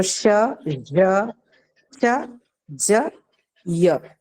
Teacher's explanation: All of them are palatal sounds that you see in English